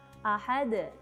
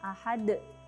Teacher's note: Seperti ada hamzah di ujung dal ketika dal ini diwaqafkan